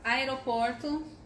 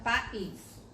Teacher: encontro de duas vogais que ficam em sílabas separadas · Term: hiato